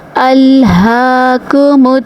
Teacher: ألهاكم تا زبر تا، کاف زبر الف کا، ألهاكم اس کاف کو باریکی سے پڑھیں گے۔